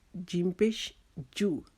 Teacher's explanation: جیم ہماری زبان کا درمیانہ حصہ تالو کے ساتھ لگائیں گے